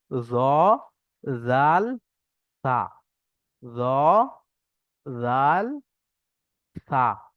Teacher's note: জীবের আগা সামনের উপরে দুই দাঁতের আগার সঙ্গে লাগিয়ে উচ্চারণ হবে